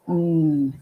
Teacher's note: gives the sound represents the sound and we don't say m we don't put the uh on the end we say um it's a long pure sound